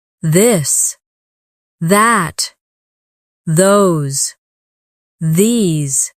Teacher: your tongue touch your teeth lightly, but use your voice.